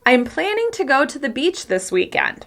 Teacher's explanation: As you can hear, the stressed words are planning, go, beach, weekend.